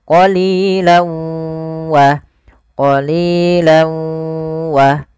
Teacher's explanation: idgham bi gunnah yaitu masukkan tanwinnya ke huruf waw, awalnya qalilan, karena ketemu waw masuk ke huruf waw, tanwinnya menjadi qalilaw.